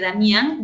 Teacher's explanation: Pero me faltaría el hiato acentual, lo cual no hay porque Damián lleva la fuerza de voz no en la I, sino en la A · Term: diptongo